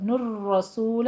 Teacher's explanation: را مفخم تشدید کے ساتھ پڑھیں گے، نر رسول، نر، یہ دیکھیے را کی تشدید آ رہی ہے نا، اس طرح سے ادا کرنی ہے۔